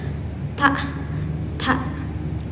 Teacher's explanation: ta ini keluar dari ujung lidah yang menempel pada pangkal gigi atas. Yaitu bersifat mahmus dan infijari. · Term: huruf ta